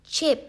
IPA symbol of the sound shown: tʃ